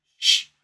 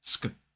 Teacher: in a modern British RP accent, we would say sh, whereas in American English, it's sk